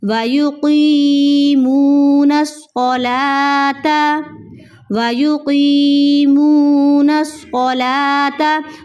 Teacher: قاف کو آپ نے موٹا کرنا ہے · صاد کو آپ نے موٹا کرنا ہے تاکہ صاد، سین اور ثا کی آواز میں آپ فرق کر سکیں